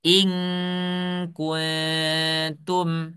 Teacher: Ketika nun sukun bertemu dengan kaf, dia seperti kuat sekali di hidung itu. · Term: ikhfa